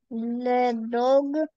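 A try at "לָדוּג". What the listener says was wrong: Лядуг, да, дагим это рыбы. Лядуг, здесь огласовка у.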